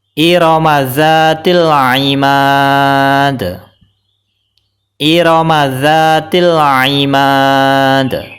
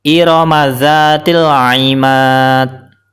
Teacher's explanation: Huruf dalnya dipantulkan karena di akhir kalimat dan diwaqafkan. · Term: qalqalah